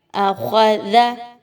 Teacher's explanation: خوا حروف مستعلیہ میں سے ہے، اس کو پر پڑھیں گے، دال کو بہت نرمی کے ساتھ پڑھیں گے، زا کی طرح نہیں پڑھنا، آخذا نہیں کہنا، بلکہ زبان کی نوک کو آگے کی طرف نکالیے، دانتوں کے درمیان رکھیے اور پھر پڑھیے آخذا۔